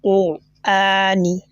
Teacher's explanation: the elongation on the al-hamza, this type of elongation is known as al-madul badal